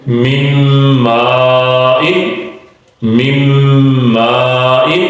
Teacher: نون ساکن کے بعد میم آ گیا تو نون کی آواز میم میں شامل ہو گئی۔